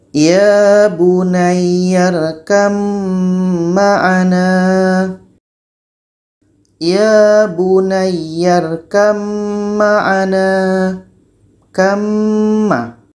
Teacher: Tapi karena terjadi di sini hukum idgham mutajanisain, ba mati ini masuk kepada bunyi mim menjadi ya bunayyarkam ma'ana.